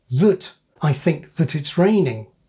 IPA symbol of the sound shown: ðət